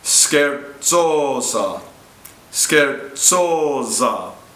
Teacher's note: The Z in scherzosa, in measures 32 and 33, is pronounced TS. The T is imploded.